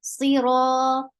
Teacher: Ra is long because this is a long vowel, and it is heavy because there is fatha.